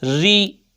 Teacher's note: جب زیر آئے گا را کو باریک پڑھنا ہے